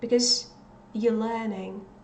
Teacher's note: in some cases, you will not hear anything where there is supposed to be this verb, are